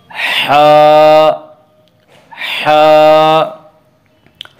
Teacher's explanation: ہا کا مخرج وسط حلق یعنی حلق کا درمیانی حصہ۔